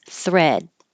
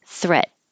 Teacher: if a word ends with a voiced consonant in this case du du has voicing then the vowel will be a little longer